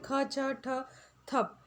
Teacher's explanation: इनके उच्चारण में हमें कहीं ना कहीं थोड़ी अधिक मुंह से हवा निकालने की आवश्यकता होती है, यानी कि अधिक प्राण की आवश्यकता होती है। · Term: महाप्राण